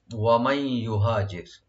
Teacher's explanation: ওয়ামাই ইউহাজির, ওয়া ওপেন, মাই এখানে মিমটাকে ওপেন রেখে নুন সাকিন যেটা আছে এখানে আমরা এদগামের সাথে গুণা সহকারে পড়বো, একফা করবো, এখানে এদগাম করবো গুণা সহকারে।